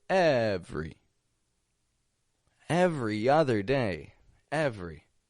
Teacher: in the middle just two quick syllables different every same thing spelled with three syllables we only pronounce two